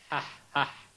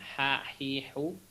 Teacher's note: nanti ha itu ada di tengah tenggorokan, dan cara prakteknya itu yang paling mirip ya di Indonesia itu biasanya seperti orang kepedesan